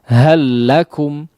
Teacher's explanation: bisa atau dikatakan juga sebagai itu rom yang Kamil ya karena seolah huruf yang pertama sudah tidak ada ya melebur masuk sempurna kepada huruf yang kedua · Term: idgham Kamil